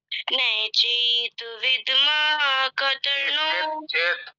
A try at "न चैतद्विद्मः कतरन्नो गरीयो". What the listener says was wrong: चेत विद्मय नहीं है, चेतद विद्मय। चेतद विद्मय बोलो। चेतद विद्मय, इसका तुम अभ्यास कर लेना, ठीक है।